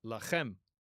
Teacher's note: make sure you get that fricative ch sound